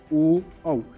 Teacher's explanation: ओ कहाँ से आवाज़ आ रही है, ओष्ठ और कंठ से। औ, इसकी भी आवाज़ कहाँ से आ रही है, कंठ और ओष्ठ से।